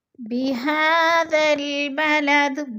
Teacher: بِهَذَا الْبَلَدِ، بہا کے اوپر کھڑی زبر ہے، کھڑی زبر کو بھی ہم نے حروف مدہ جتنا لمبا کرنا ہے، یعنی 1 الف 2 حرکات کے برابر۔